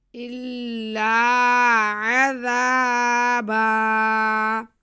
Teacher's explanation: الا عذا، آگے با پہ دو زبر کی تنوین ہے، یہاں پہ ہم نے وقف کرنا ہے، ہمارا رکوع بھی ہو رہا ہے، آیت بھی ختم ہو رہی ہے، تو ہم نے یہاں پہ با پہ وقف کرنے کے لیے تنوین دو زبر کی جو ہے اس میں سے ایک زبر کو ختم کر کے ایک زبر کو الف کے ساتھ پڑھ لینا ہے